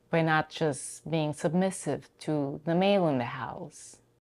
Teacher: raises her interation a little in the word male and then goes down with her pitch at the end of the sentence which indicates the end of her thought